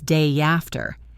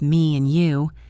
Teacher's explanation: When a word ends in an e sound like me, see, hey, or an a sound like say day, play, and the next word starts with a vowel, you add a little y sound. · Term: Y intrusion